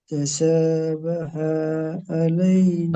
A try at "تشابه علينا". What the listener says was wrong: বাহা টান হয়েছে তাশাবাহা আলাইনা।